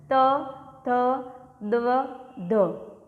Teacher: ત વર્ગમાં દંત્ય મતલબ દાંત દ્વારા સ્પર્શથી બોલાતા હોય